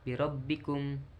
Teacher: ro tafhim yaitu ro yang dibaca tebal